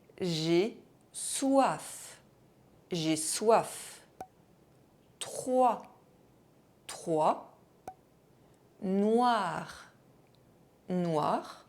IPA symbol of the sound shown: wa